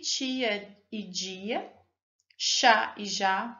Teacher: Percebam que o som é produzido na região imediatamente anterior à região onde se articulam os sons alveolares. Trata-se de um som de base alveolar, ao qual foi acrescentada uma qualidade palatal. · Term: alvéolo palatal